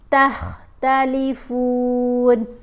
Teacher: پھر ہم نے یہاں پر خا کو پر پڑھنا ہے، فا کو تھوڑا سا لمبا کر کے پڑھنا ہے